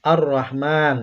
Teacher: Ini contoh bacaan syamsiyah, alif lam syamsiyah. Lamnya tidak bisa dibaca atau hilang ya, masuk ke huruf setelah lamnya yaitu huruf ro yang mengharokat tasydid.